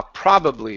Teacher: Instead of probably, it's pra with an ah.